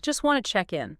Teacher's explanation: the speaker doesn't pronounce the T sound in either word. Not in just and not in wanted. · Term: consonant reduction